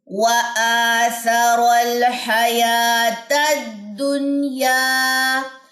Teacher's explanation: اکثر نون ساکن کے بعد اب یا ساتھ جڑی ہوئی آ گئی ہے تو ہم یہاں پہ غنہ نہیں کر سکتے